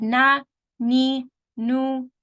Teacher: goes up into the nose so here we have two Maharaj we have the tip of the tongue and the sound comes out from the nose you don't need to do anything for the nose so you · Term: noon